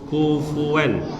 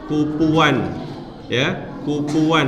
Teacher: Nah, huruf fa ya, kufuwan itu bacanya jangan kufuwan, jangan bibir ketemu bibir, kufuwan salah. Tapi bibir bawah bagian dalam bertemu ujung gigi seri atas, kufuwan, dan ada udara yang keluar, kufuwan ahad ya.